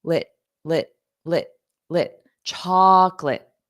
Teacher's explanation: And notice that end sound, it doesn't sound like late at all because it's an unstressed lit. So you should feel the sound in your throat.